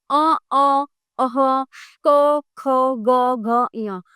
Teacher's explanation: ये कंठ से बोले जाते हैं